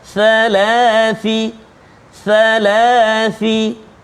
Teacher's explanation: Hujung lidah keluar sikit kena gigi kacip atas.